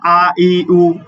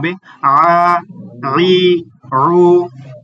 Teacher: আইনের উচ্চারণ একটু হলকের মাঝখান থেকে